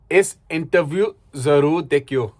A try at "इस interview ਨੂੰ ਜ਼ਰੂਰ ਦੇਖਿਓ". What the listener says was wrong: ਨੂੰ ਵੀ ਆਣਾ. इस interview ਨੂੰ ਜ਼ਰੂਰ ਦੇਖਿਓ.